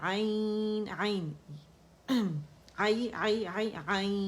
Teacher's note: لین ہے نا، یا ساکن سے پہلے زبر ہے. ٹھیک ہے، یا ساکن ہے اور پھر عین کے اوپر زبر ہے تو یا لین بنا اسے